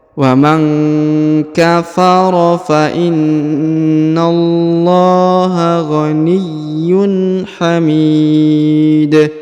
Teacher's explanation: Dan huruf dal kita sukunkan atau kita matikan. Dan ketika kita matikan atau kita sukunkan, maka dalnya dibaca pantul atau qalqalah